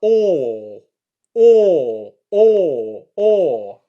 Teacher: my lips actually come in to form a circle